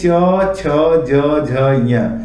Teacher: च वर्ग में आते हैं च, छ, ज, झ, ञ, ये ताल को स्पर्श करते हैं